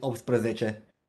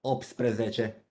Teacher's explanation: in rapid speech, if I were to pronounce it, I just call it opsprezece. So I'll get rid of the T somehow